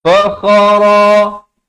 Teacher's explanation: kha di hujung kerongkong